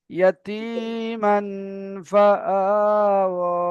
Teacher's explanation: তাই তানবিনের আওয়াজকে এক আলিফ পরিমাণ নাকে নাকে তুলে গুণনা করে পড়তে হবে।